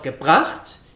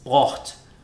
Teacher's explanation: Shortening of the prefix GE in the participle to G is a characteristic. Instead of gebracht, it's brocht.